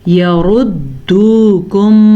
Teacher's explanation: را پہ پیش ہے تو را کو پر پڑھیں گے